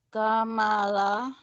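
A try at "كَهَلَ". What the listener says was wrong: Kahala. Bukan mim ya ini ha.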